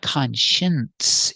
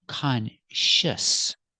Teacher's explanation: There's no N. It's not conscience, it's conscious. You have the sh sound for the second syllable, sh, closed sound, sh, and the S sound, s, shus, shus.